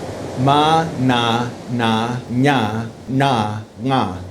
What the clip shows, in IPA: ma, n̪a, na, ɲa, ɳa, ŋa